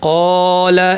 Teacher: কিন্তু এর বিপরীতে এখানে কলা এটা ভারী বলি, হ্যাঁ ক ক এই আওয়াজটা কি, এই আওয়াজটা ভারী, কলা অর্থাৎ আওয়াজটাকে উপর দিকে ঠেলে দিলাম, এই জন্য আলিফটাও ভারী হবে। কফ যেহেতু ভারী হরফ তার সাথে আলিফটাও ভারী হবে